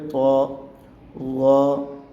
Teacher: تو کو ہم زبان کا جو سینٹر ہے اس کو اوپر والے تالوں کے ساتھ لگا کے ادا کریں گے۔